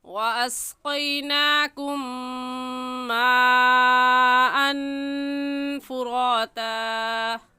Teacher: کم کی میم ساکن پر غنہ کریں گے کیونکہ میم ساکن کے بعد میم آ گیا ہے، اور قاعدہ ہم پڑھ چکے ہیں کہ میم ساکن کے بعد میم آ جائے یا با آ جائے تو اس میم ساکن پر غنہ کرتے ہیں۔